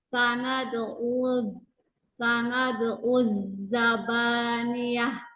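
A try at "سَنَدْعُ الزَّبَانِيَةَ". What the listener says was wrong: Lagi, sofir zainya kurang kerasa. Uzza. Harus sampai sana. Ada uzza. Ada suaranya tuh. Uzza. Ya, lebih nanti coba lebih ya itu sofirnya nih. Sanada, oh, sofirnya rokohnya ya. Sanada uzzaba uzza. Ya memang itu sofirnya sih. berarti latihannya sod dan zai. Jadi sering-sering baca z.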